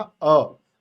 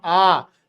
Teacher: तो अब छोटा आ कहने में कम समय लग रहा है, बड़ा आ कहने में ज्यादा समय लग रहा है, यानी छोटा आ कहने में मैं कम मात्रा, समय की कम मात्रा इस्तेमाल कर रहा हूं, बड़ा कहने में मात्रा ज्यादा इस्तेमाल कर रहा हूं। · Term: छोटी मात्रा